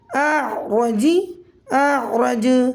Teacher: حالت وقف میں جیم کا زیر ختم ہو جائے گا، جیم ساکن ہو جائے گا، قلقلہ ہوگا قلقلہ کبریٰ